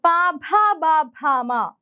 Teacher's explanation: ഇനി പ, ഭ, ബ, ഭ, മ അവ നമ്മളെ ചുണ്ടിൽ തട്ടുകയാണ് ചെയ്യുന്നത് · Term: ഓഷ്ട്യം